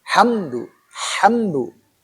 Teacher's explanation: Izhar syafawi. Jadi izhar jelas syafawi bibir. Karena mim huruf bibir ya. Dua bibir.